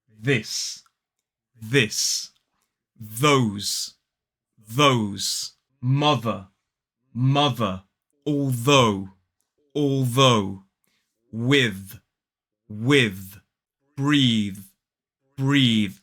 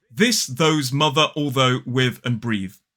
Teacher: so let's practice this voiced th sound in these words